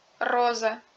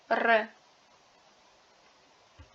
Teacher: La lettre R en russe est roulée comme en espagnol.